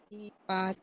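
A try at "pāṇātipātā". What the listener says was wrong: Not pat. Because there's only one T. So panatipata.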